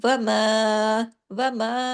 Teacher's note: अब मीम के साथ अलिफ लगा। यह अलिफ बारीक हो गया।